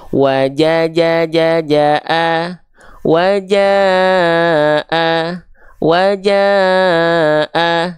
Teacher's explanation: 4 harokat itu ya, panjang 4 harokat itu seperti kadar kita melafalkan ja-nya 4 kali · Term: empat harakat